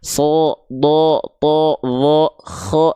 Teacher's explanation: Huruf yang dibaca dengan karakteristik yang tebal itu akan condong terdengar seperti vokal O.